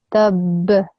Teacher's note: But what changed here is because we're also doing waqf here, we're pausing, the ba has also become a qalqala letter